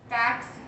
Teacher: Percebe esse som aqui de K junto com o S